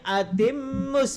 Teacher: Seharusnya atimmus Puan tadi baca atimus tak ditekan. Dia kena tekan sebab ada wajibul gunnah.